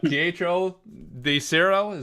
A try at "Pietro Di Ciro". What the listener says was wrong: The zero. It has an accent at the end of it.